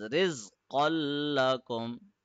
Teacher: Since lam has a shadda on it, the double fatha of qaf will turn into single fatha, and we will connect the qaf with the lam, pressing it for 1 second because of the shadda on it